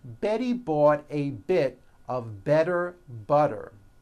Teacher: remember all the T's are pronounced as DS because they fall between vowels